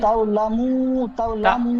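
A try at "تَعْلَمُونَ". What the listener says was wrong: তাও হবে না, তা ওয়াও জবর তাও হয়, এখানে আইন আছে, তা আইন জবর তা। কাল্লা সাউফা তালামুন, বলেন। তালামুন, এখানে কাল্লা সাউফা তালামুন, পড়াটি বানান করেন।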